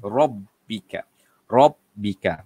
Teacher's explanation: Jadi ra kalau dibaca ataupun kalau barisnya berbaris atas, kalau hurufnya berbaris di atas, maka bacaannya ialah ra tebal.